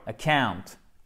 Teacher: Accent tonique sur la seconde syllabe.